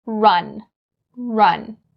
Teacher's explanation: And you shouldn't roll your tongue too much for the R sound like Spanish people would do.